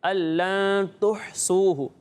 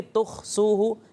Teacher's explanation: ہا حلق کے درمیان والے حصے سے ادا ہوتا ہے، ٹھیک ہے، تو اسے اس کے مخرج سے ہی ادا کریں گے، الَّن تُحْصُوهُ، ٹھیک ہے، تُخْصُوهُ یہ غلط ہو جائے گا۔